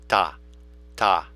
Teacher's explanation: We aspire as part of it. We don't hold that back. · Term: aspired